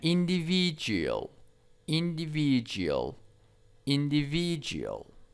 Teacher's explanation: the stress is on the third syllables